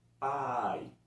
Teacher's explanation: O A vem primeiro do que a outra vogal que é mais fraca. No caso, o I. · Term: ditongos